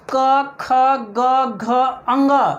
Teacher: मतलब हम लोग बोल सकते हैं कि कंठ से, हमारा ये कंठ जो है, इस कंठ से क्या क्या निकलता है, क, ख, ग, घ, अंग। कंठ से ये पूरा लाइन जो है, ये पूरा लाइन वो सभी कंठ से निकलता है